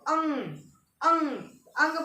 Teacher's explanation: अंग अंग अंग बोलोगे तो ये नाक से हवा निकलती है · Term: अनुस्वर